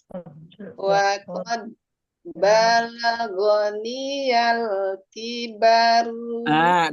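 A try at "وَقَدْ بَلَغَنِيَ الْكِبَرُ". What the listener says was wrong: Dalnya kurang pantul.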